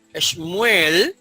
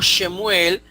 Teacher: a veces no se acostumbra a pronunciar el sheva vocal